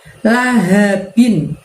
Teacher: La ha-nya tebal dari tenggorokan bagian bawah. Binnya karena di ujung ayat maka disukunkan atau menjadi dimatikan.